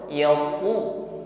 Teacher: Yasu ini tipis ya, ditebalkan, bukan sekedar yasu tetapi yasu. Su tebal bunyi huruf shad.